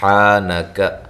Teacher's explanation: کاف باریک ہے، حا کو واضح نکالیں اور الف مدہ کے قائم مقام ہے